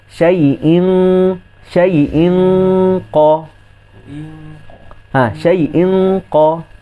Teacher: Kerana qaf ni dia tidak ada sifat itbaq. Jadi dia punya ketebalan dia tu kurang sikit berbanding huruf itbaq. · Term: huruf qaf